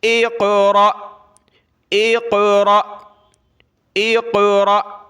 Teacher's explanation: قاف پر قلقلہ اور حمزہ ساکنہ پر جھٹکا. اقرأ وقفاً، جب رکیں گے تو سیم وقف ہوگا.